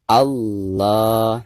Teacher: membaca lafaz Allah itu tidak boleh ada huruf wawunya · Jadi ketika kita mengucapkan la, maka ujung lidah kita harus menempel ke atas. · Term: lam jalalah